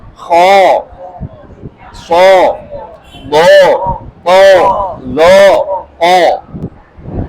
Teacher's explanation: Istilla itu adalah huruf yang ee memiliki sifat yaitu terangkatnya pangkal lidah ke langit-langit sehingga huruf itu menjadi terbaca tebal